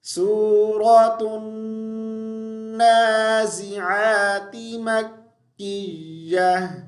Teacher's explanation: یہاں پہ واو کو نون کے ساتھ ملائیں گے شد کی وجہ سے، اور یہاں پر دیکھیں عین کو ہم نے حمزہ نہیں پڑھنا، ٹھیک ہے، عین کو اچھے سے ادا کریں گے۔